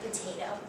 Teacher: in potato the first syllable is weak and the second two syllables are strong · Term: weak syllable